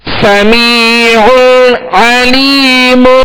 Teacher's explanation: یہاں دو عین ہے, یہاں پر دو عین ہے اور عین وسط حلق سے ادا کریں گے, اور یہاں غنہ بھی نہیں کریں گے. اظہار کا قاعدہ ہے کیونکہ پہلی عین پر دو پیش کی تنوین ہے اور آگے عین حروف حلقی میں سے آ رہی, لہذا یہاں اظہار کریں گے.